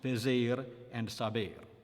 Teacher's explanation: The infinitive ending in stressed er is close